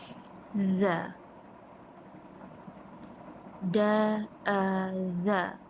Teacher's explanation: Untuk huruf za, hujung lidah perlu sedikit menempel pada gigi atas.